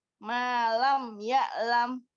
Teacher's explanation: Ibu fokus pada malam. Maknya tidak kepanjangan.